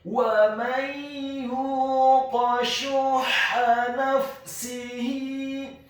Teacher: Wa may yuqa, kemudian huruf ya-nya dibaca tipis tarqiq dhammah 2 harokat karena setelahnya ada huruf wawu sukun, dan huruf qaf-nya dibaca tafkhim tebal fathah 1 harokat.